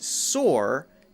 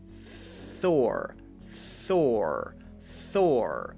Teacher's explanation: put your tongue between your teeth and again there's no voice under the th